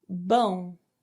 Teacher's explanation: the sound comes out of your mouth and your nose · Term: nasal sound